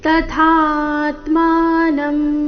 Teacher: ಥ ಮಹಾಪ್ರಾಣ ದೀರ್ಘ ಬಂದು ನಂತರ ಆಘಾತ